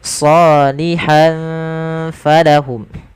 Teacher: kita hukumi dengan bacaan ikhfa dan samarkan tanwinnya ke huruf fa